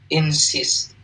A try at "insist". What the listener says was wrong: I insist. So it's not E, it's a kind of like, like I insist.